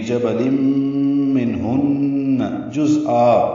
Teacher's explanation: मिनहुन्ना में नून साकिन पे इजहार और नून मुशद्दद पे गुन्ना है